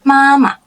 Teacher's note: Ma is the first tone. The second part of the word, there is no tone, which is a neutral tone.